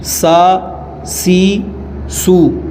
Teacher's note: سین ہے، سا، سی، سو، اس میں سیٹی پیدا ہوگی